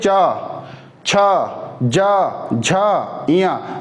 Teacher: जीभ जाके ऊपर तालु में सटता है, फिर हमारा प्रेशर से आवाज निकलती है